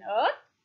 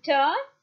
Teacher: The lips are neutral. It is a long vowel. Therefore, the received pronunciation a is thus a central unrounded vowel between half closed and half open.